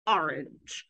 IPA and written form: ˈɑɹˌɪndʒ (orange)